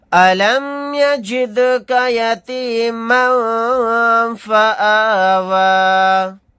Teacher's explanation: پھر یہاں پر دال ساکن ہے تو یہاں پر ہم قلقلہ کر کے پڑھیں گے۔